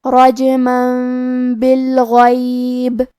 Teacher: با حروف القلب میں سے ہے اور قلب کا معنی ہے بدل دینا، تو ہم یہ تنوین کو میم میں بدل کے اور غنہ کے ساتھ یہ حکم کو ادا کریں گے · کیونکہ غین حروف تفخیم میں سے ہے تو ہم یہ حرف کو موٹی آواز میں پڑھیں گے